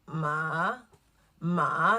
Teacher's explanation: Ma, you actually feel it in your throat, and it's like you're going a little bit lower and slightly raising your voice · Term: third tone